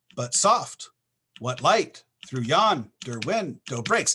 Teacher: it's absolutely perfect iambic pentameter each of these unstressed followed by a stress